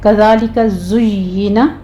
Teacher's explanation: ज़य के ऊपर हमने सीटी की आवाज़ लेकर आनी है